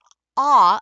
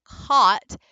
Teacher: it stays right there in the front of your lips but when you go to that ah as in hot you're pulling the sound back with your tongue